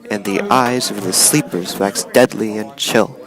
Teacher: two unstressed syllables followed by one stressed syllable · Every third syllable is stressed. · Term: anapestic poetry, anapest